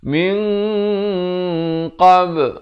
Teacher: Min di sini hukum ikhfa, tetapi dibacakan dengan tebal kerana qaf merupakan huruf isti'la.